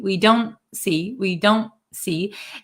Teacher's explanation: we don't see it's called a held te where we um our tongue goes in the position of the T but we don't aspirate